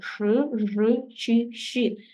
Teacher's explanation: чотиричотири роки дитина вже повинна вимовляти ш ж ч ш тобто шиплячі звуки і вони набагато складніші бо артикуляційний апарат сам язик повинен підійматися вгору